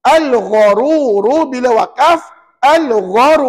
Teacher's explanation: Dan puan-puan perasan tak bacaan kita panjang ya? 2, 4, 6 harakat. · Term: mad arid li sukun